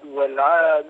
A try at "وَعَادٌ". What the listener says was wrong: لا وعاد بدون ألف ولام يا أخي.